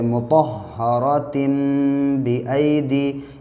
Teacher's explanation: तनवीन के बाद बा आने की वजह से उसमें इक़लाब हो रहा है